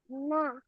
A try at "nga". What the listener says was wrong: Nga. Hindi po siya na. Nga.